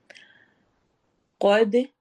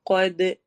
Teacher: دال میں ایکو sound ہوگی کیونکہ کلکلا ہو رہا ہے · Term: قلقلہ